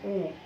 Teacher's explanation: আর যখন আমরা পশ্চাৎ স্বরধ্বনির কথা বলছি তখন কিন্তু আমাদের উ, যখন বলছি উ, জিভ কিন্তু পেছন দিকে যাচ্ছে, উ কিন্তু একটু উপরে থাকছে, উচ্চ পশ্চাৎ। আমরা যখন বলছি ও তখন মধ্য পশ্চাৎ।